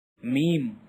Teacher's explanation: pronounced from the dry part of both lips